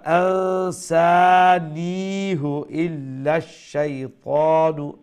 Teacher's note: নি এখানে লম্বা হবে, নুনের পরে ইয়া আছে না, ইয়া হচ্ছে ইয়া মাদ্দা। আর ইয়া মাদ্দার কাজটা কি, তার আগের যে জের আছে যেটা অরিজিনালি খাটো ছিল সেটাকে লম্বা করে দেবে।